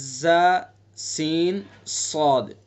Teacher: زا سین صاد تینوں کا مخرج ایک بیان کیا گیا کہ زبان کی نوک اور ثناء سفلی کا کنارہ اور کچھ اتصال ثناء علیا سے، زبان کی نوک کو ثناء سفلی کے کنارے سے اور کچھ ثناء علیا کے کناروں سے ملائیں گے۔ ثناء سفلی نیچے ہیں اور ثناء علیا اوپر ہیں، تو وہاں سے ادا کریں گے ز سین صاد۔